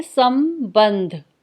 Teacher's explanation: स के बाद म की साउंड इसलिए बोली क्योंकि यहाँ पे ब है जो प वर्ग का है और पांचवा अक्षर म आता है। · स के बाद हम म बोल रहे हैं और ब के बाद हम न बोल रहे हैं